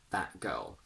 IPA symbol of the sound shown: ʔ